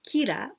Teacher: the l and r sound is the same so we say kira